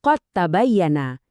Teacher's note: Karena mereka ini berbagi tempat asal yang sama, lidah secara alami cari jalan pintas. Kamu ngeleburin dalnya dan langsung lompat ngebunyiin ta yang digandakan. Jadinya qad tabayyana.